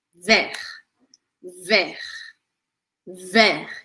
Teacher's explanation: você vai abrir o e bem aberto ver e falar até a letra R arranhada